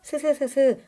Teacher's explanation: 소리가 나가다가 일정 구간에서 통로가 좁아지면서 그 좁아진 통로에 공기가 스스스스 마찰하며 나가는 소리입니다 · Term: 마찰음